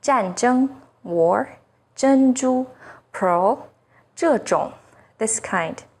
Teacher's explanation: ZH sounds like the first sound in jerky, with the tip of the tongue raised against the hard palate.